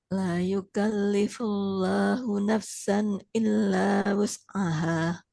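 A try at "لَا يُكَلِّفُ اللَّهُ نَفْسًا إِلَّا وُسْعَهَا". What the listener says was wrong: Kita ulang dulu Ibu. La yukallifullahu nafsan. Sempurnakan dulu huruf A-nya. Nafsan illa wus'aha.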